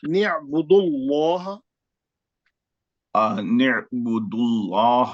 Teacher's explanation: نہیں تھوڑا رک کے نہیں ملانا. انعبد اللہ دال کے پیش سے سیدھا لام میں جانا. تھوڑا ادھر ادھر واو پڑھنا ہے کیا الف پڑھنا ہے کیا نہیں سمجھنا.